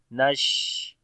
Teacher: شین کے اندر صفت تفشی بھی ہوگی، یعنی آواز منہ کے اندر پھیل جائے گی اور ہمس بھی ہوگا، سانس جاری رہے گا اور آواز میں جو ہے وہ کمزوری آئے گی، نش۔ تو